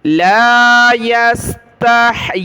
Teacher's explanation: یا کے نیچے کھڑی زیر اور مد ہے تو یا کو نیچے کی طرف ہم نے زیادہ کھینچنا ہے۔ مد اور کھڑا زبر اوپر ہوتا، یہ جو کھڑا زبر ہے جس پر پین کا میرا یہ ہے نشان، تو یہ اوپر ہوتا تو اوپر کی طرف کھینچنا ہے، لیکن یہ نیچے ہے تو یا کو ہم نے نیچے کی طرف کھینچنا ہے۔